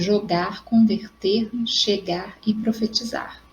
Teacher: Exemplos típicos da fala brasileira, em qualquer variedade linguística, da eliminação do som do R final na pronúncia das formas verbais no infinitivo.